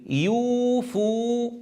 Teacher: لكن يوفون بالنذر، يوفوا، أحتاج أن أرجع قليل، يعني أن أرجع قليلا إلى مخرج الفاء، فأضغط بأطراف الثنايا العليا على بطن الشفة ثم مستمرا بالضم، يعني أرجع قليلا إلى مخرج الفاء ثم أضم مباشرة.